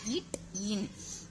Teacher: நாவின் நுனி அன்னத்தின் நுனியை பொருந்துவதால் பிறக்கும் எழுத்துக்கள் வந்து இட் இன்